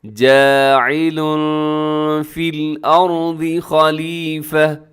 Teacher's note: جاعل میں تنوین ہے لام کے اوپر اور تنوین کے بعد فا حروف اخفا میں شامل ہے تو اپنے آواز کو یہاں پر کیا کرنا ہے، اخفا کرنا